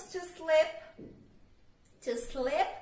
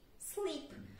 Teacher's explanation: com o somzinho do I breve, fica escorregar. Agora, se é com o som do I longo, fica dormir